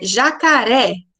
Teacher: Então, a última sílaba ela fica mais forte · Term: oxítona